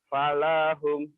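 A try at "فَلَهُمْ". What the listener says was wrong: Kenapa panjang? Nggak ada yang panjang.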